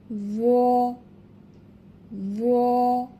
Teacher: এবং এর মাখরাজ অর্থাৎ উচ্চারণের স্থান লক্ষ্য করি। জ উচ্চারণ করতে হবে জিহবার আগা, সামনের উপরের 2 দাঁতের আগার সঙ্গে লাগায়া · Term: মোটা হরফ